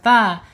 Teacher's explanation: ujung lidah menyentuh langit-langit ya, menyentuh pangkal gigi seri yang atas ya. Menyentuh pangkal gigi seri yang atas ta.